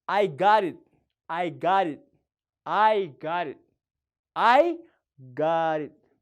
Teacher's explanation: Qubeen taantun dubbachiiftuu lama jidduutti dhufnaan akka qubee daatti dubbifamti yookaan immoo daa akkamii daa jajjaba osoo hin ta'in daa laaftuu soft jechuudha. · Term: flap T